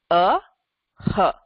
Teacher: This Visarga gives a h sound. It's an expiration of air. H. Just if you let out air from your mouth without any stoppage, this is the sound that you'll get.